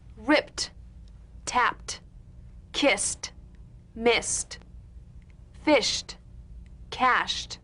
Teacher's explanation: ED endings that are really pronounced as T.